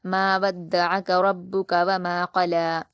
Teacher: وما میم پر کھڑا زبر ہے 2 حرکات کھینچیں گے، قلا قاف کو پر پڑھیں گے اور جلد پڑھیں گے، لام پر کھڑا زبر ہے 2 حرکات کھینچیں گے